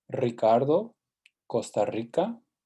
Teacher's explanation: sometimes when we spell it as a single R, it's actually pronounced as the trill R. That is true always at the beginning of a word.